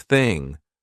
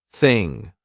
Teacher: No voice, there's no buzz in my throat. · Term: unvoiced TH